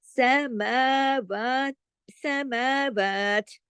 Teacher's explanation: میم کو الف کی طرح کھینچیں گے اور واو کو بھی ، کیوں؟ اس کی آواز میں اوپر جو کھڑی زبر ہے